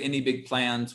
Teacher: we can just say any big plans with rising intonation